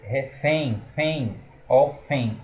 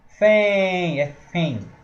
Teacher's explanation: O som vem nasal, só que é decrescente. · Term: ditongo nasal decrescente